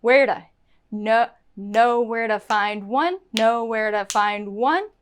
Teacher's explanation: And where to turns into a da.